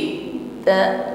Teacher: huruf ta juga memiliki sifat syiddah ketika ditasdid makhjnya tertutup dengan sempurna sehingga bunyi Ta di sini tertahan